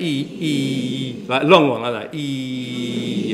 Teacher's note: fleece, E, is a high front vowel because your tongue is high up in your mouth and it's towards the front of your mouth